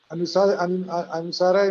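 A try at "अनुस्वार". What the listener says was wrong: Anuswara, not anusara. Anuswara.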